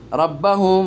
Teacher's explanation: রাব্বাহুম মিম সাকিনের ইখফা, মিম সাকিনের বা এসেছে, এই জন্য গুন্না হয়েছে।